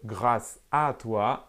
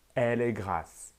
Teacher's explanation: la grande majorité des francophones - moi compris - ne fait pas la différence entre grâce à toi et elle est grasse